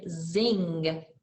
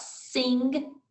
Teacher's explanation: Zing had the buzzier feeling, where sing has the S feeling.